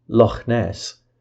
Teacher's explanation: The velar fricative ch, as in Loch Ness, is articulated at the same place as k.